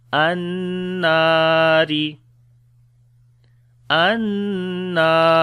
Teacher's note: On the noon there is shadda sign, we make gunna, and also we long due to alif madda. An-nari, ra we read in light sound.